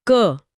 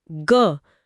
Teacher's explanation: अगर मैं क बोलती हूँ, क, तो गले में कोई हलचल नहीं है, मतलब ये अघोष है।